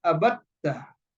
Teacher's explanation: Now dal is not pronounced anymore. because dal has been changed into ta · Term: idgham